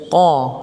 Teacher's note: huruf qaf itu adalah huruf yang keluar dari lisan bagian dalam